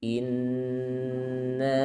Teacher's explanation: hamzahnya jangan dipanjangkan ya, jadi jangan in, bukan in, tapi langsung ke huruf nun